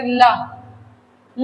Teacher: तो दोनों बगल से वायु निकलती है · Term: पार्श्विक ध्वनि